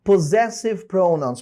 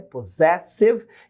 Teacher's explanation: esses dois S's aqui são a sílaba tônica, né? Possessive, e eles têm som de Z